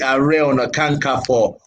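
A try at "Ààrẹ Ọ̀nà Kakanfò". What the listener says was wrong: not Kankanfo. That's Igbo pronunciation. Kakanfo, not Kakanfo. It's our Igbo brother that called me Kakanfo.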